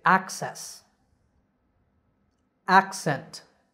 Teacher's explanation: double c acts like k s so we say access accent in both of these words the stress is on the first syllable